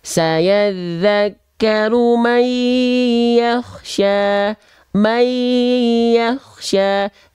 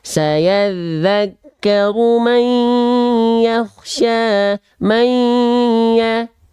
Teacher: dengung itu suaranya harus masuk ke rongga hidung, al-khayshum